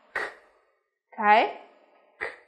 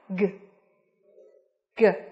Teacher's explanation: Vì vậy khi phát âm G của chúng ta thì nó sẽ gì nhỉ? Nó sẽ rung một chút ở phần cổ họng của chúng ta nhá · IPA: /g/